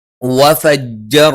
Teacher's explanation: ജ നാവിന്റെ മധ്യഭാഗം മേലെ അണ്ണാക്കിലാണ്